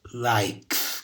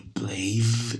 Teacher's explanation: Finishes tem IEZ. Likes é só um S. E plays é com o som de Z. Então, finishes com IZ.